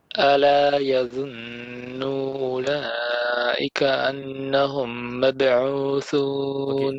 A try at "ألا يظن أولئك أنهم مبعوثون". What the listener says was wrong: Now when you say يظن, don't stretch the nu.